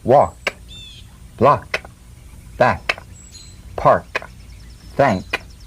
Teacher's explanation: With the tongue in the G position, let the tongue spring away in the soft unvoiced click of the K drum beat. Feel a crisp tap and a pulsation in the back of the tongue.